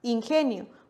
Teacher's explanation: ingenio precisamente su sílaba tónica se encuentra en esta penúltima posición porque la en ese caso la composición nio es una sola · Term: palabra grave